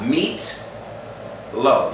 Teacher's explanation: So when I say meatloaf, right, in English, meatloaf, you can actually spell that in Hebrew, meatloaf. There's no vowel between the T and the L. That is a glottal stop.